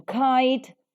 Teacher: these sounds are articulated with the back of the tongue and the soft palate hence they are called as the Villar sounds the last place